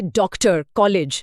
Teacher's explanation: ये आ और ओ के बीच की ध्वनि है